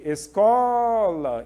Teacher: eu demorei mais no có Essa é a sílaba mais forte